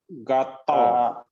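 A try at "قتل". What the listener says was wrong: katal. katal membunuh. Kalau katal ya karo-karo ini ya. Kalau dibaca G beda artinya. Katal.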